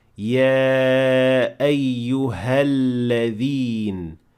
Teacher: this alif will completely disappear and we will say يا أيها الذين without mentioning any Hamza whatsoever at the beginning of the word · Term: Hamzat al-Wasl